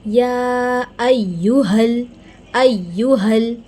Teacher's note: حمزہ اور یا کو ہمیں جما کے پڑھنا ہے اور ہا کی آواز کا خیال رکھنا ہے۔ یہ حلق سے ادا ہونے والا ہا نہیں ہے، بلکہ اسے ہم یا ایہل، ایہل، ٹھیک ہے۔